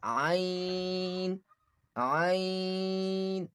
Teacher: Middle, from the middle part of the throat.